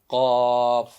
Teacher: ہم قوف اور کاف کا مخرج کیا ہے کہ زبان کی جڑ، جی یہ دیکھ رہے ہیں زبان کی جڑ جو اندر کی طرف ہے، ہم زبان کی جڑ جب کوے کے قریب تالو کے نرم حصے سے لگے تو قوف ادا ہوگا